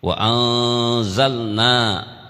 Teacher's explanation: Wa anzalna itu ikhfa, nun mati ketemu zai, huruf ikhfa berarti 15.